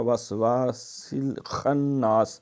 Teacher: خا کے اندر خراٹا ہوتا ہے